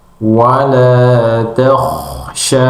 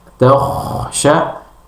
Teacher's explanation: ketika menyebutkan takhsha, maka itu akan terasa di ujung atas tenggorokan seperti ada di gambar ini. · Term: huruf Kha